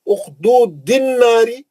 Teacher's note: الف لام رہا تو میں بولا تھا جب بھی الف لام رہیں گا الف پہ زبر دے کے پڑھنا، نہ تو نہیں پڑھ سکتے نا، ہم اسٹارٹ نہیں لے سکتے، اگر آپ ملا کے پڑھیں گے اخدود الناری، الف بھی گر گیا لام بھی گر گیا، کیونکہ ہم اخدود پہ رک گئے تھے تو اب اس پہ زبر دے کے الناری سے پڑھیں گے. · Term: شمسی